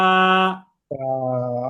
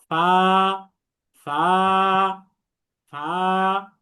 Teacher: নিচের ঠোঁটের পেট সামনের উপরের দুই দাঁতের আগার সঙ্গে লাগিয়ে উচ্চারিত হয়।